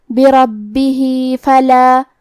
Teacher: آخری میں ہا کے نیچے کھڑی زیر ہے تو ہمیں مد صلہ صغرا کو ظاہر کرنا ہے